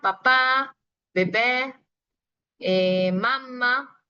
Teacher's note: cuando pronuncias estas letras, pues se nota bastante que los labios se juntan completamente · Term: bilabial